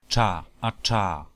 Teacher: O sea, como una africada retrofleja sorda. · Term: pronunciación rehilada de trr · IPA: [t͡ɹ̝̥]